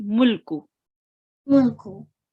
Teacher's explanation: we do not stay on the lam. We just say mulku.